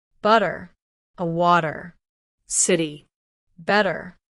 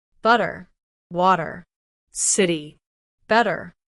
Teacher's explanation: It's not a hard t sound like at the beginning of a word. Instead, it's softer, almost like a quick D. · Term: flap T sound, flap T